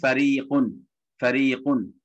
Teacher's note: ஃபரீக் அல்லது ஃபரீகுன் மெல்லினமா ஓதுறோம் ஏன் ரா வந்து கசர் பெற்றிருக்கிறது